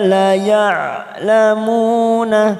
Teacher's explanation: la ain sukun, la jangan samakan dengan hamzah, ya, tapi ini ain sukun